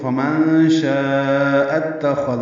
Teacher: یعنی شاء یہ حمزہ ہے، اب اس کو آگے اتخذ کے تا سے ملانا ہے تو اکٹھا جو پڑھیں گے تو فمن شاء اتخذ ہوگا. حمزہ کو تا سے ملایا، بیچ میں الف نہیں پڑھیں گے. خوا پر پڑھیں گے، دال نرمی سے پڑھیں گے.